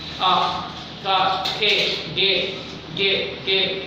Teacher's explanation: के बोलते हमारे कंठ से आवाज है।